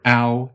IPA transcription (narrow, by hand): aʊ̯